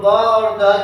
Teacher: ब और द जो है दोनों जो है घोष वर्ण है ना